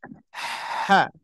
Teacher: Di Sini huruf Ha keluar dari tenggorokan bagian bagian tengah